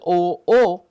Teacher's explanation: the jaw moves down and the tongue is said to be back